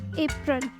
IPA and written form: ˈeɪprəl (April)